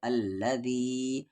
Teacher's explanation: یہاں پر مد کے سمبل کے بعد حمزہ ہے، یعنی اس مد کو 3 سے 4 الف کے برابر کھینچیں گے